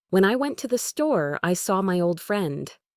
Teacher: There's a slight pause, a change in pitch after store that helps separate the two ideas. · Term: thought groups